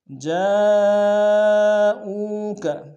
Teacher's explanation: جاءوک جا میں مد متصل ہے، کم سے کم 3 الف میں کھینچیں گے ، او میں واو مدہ 1 الف میں کھینچیں گے، جاءوک